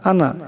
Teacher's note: আনা এখানে দেখেন নুনের পর আলিফ আসছে, কিন্তু এই নুনকে লম্বা করা যাবে না, এই আলিফটা লেখাতে আসবে কিন্তু পড়াতে আসবে না, তাই আনা এমন করে পড়তে হবে।